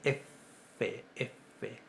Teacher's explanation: Si decimos que es labiodental, generalmente, siempre, va a ser del labio inferior con el incisivo superior